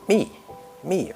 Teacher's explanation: The fourth tone is 米, from the high point to the low point